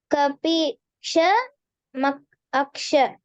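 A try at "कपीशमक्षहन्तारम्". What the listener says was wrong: Not Aksha, Maksha. That is, dot is there, no? That is im plus a ma.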